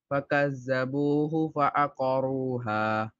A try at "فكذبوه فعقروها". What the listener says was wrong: Zal should be more softer. Again, try again. Look, فكذبوه فعقروها. Where are you touching your tongue in Zal?